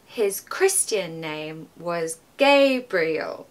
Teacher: I'm also stressing Gabriel because it's the name it's important it needs to be communicated in that sentence